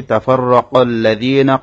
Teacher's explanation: কফ মোটা করে উচ্চারণ হবে।